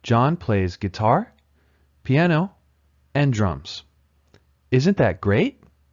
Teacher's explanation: also uses Rising intonation guitar piano and drums is a list the items in the list have Rising intonation until the final item the final item uses falling intonation · guitar has Rising intonation so does piano but drums has falling intonation